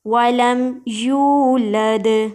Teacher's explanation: یا کو ایک الف کے برابر یعنی تھوڑا سا کھینچیں اور دال پہ قلقلہ کریں، یعنی دال کو ہلائیں.